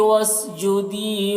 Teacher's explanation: واسجدی یا مدہ ہے, 1 الف کے برابر کھینچ کر پڑھیں گے